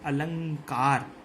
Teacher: जो अनुस्वार है उसका उच्चारण स्थान होता है नासिका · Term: अनुस्वार संधि